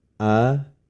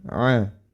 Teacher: makhrajnya terdapat di pangkal tenggorokan, sedangkan huruf ain berada di tengah tenggorokan.